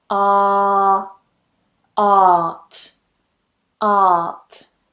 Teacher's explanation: If you're one of those people watching who wants to soften your accent a little bit, then completely forget that R there, or R, depending on how you pronounce it, and just pronounce it as one vowel. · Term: standard RP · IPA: /ɑː/